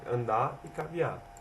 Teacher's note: é o desuso do som da letra R em palavras que terminam com R, ou seja, o R sempre muda no fim de palavras, como andar e caviar, que se torna andar e caviar.